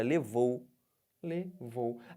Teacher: Do O para o U. O que está acontecendo? Estou descendo. Então, eu tenho um ditongo decrescente.